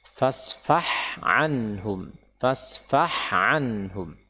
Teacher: Hati-hati di sini huruf ha sukun, kemudian ada ain. Hati-hati dari memasukkan ha ke dalam ain